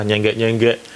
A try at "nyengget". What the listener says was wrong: Oh pendek, nyengget tat. Nyengget ada T-nya.